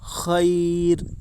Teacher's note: یا ساکنہ سے پہلے زبر ہے اس لیے یا لین ہوگی، یا لین کو نرم آواز کے ساتھ جلدی ادا کریں